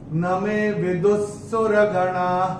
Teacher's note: और चूंकि यहाँ पे स आया है तो ये विसर्ग का उच्चारण होगा आधा स। तो आप अपनी किताब में जो विसर्ग आपको दिख रहा है उसको स्ट्राइक ऑफ करके आधा स लगा सकते हैं।